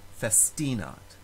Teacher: In the word festinat, the second to last syllable has a long vowel, long I, so that syllable automatically receives the stress